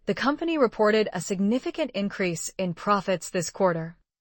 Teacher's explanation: The stressed words are company, reported, significant, increase, profits, quarter. Those are the content words, the nouns, verbs, adjectives, and adverbs.